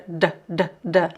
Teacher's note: In Portugal, the duh sounds like a du du duh, not like as a j.